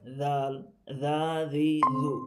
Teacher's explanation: আমাদের এই জাল, এই জালের জন্য জিহ্বার আগাটা সামনের যে উপরে এক দাঁত আছে, এই উপরে দুই দাঁতে আগা থেকে একটু বের হয়ে কি উচ্চারণটা হবে